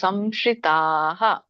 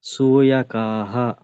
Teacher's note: ಇಲ್ಲಿ ತಾ ಹೇಳಿದಾಗ ವಿಸರ್ಗ ಕೂಡ ಹಾನೆ ಬರ್ಬೇಕು.